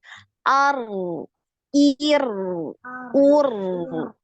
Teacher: getaran sekali aja jadi yang ngalir suara seperti itu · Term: ro sukun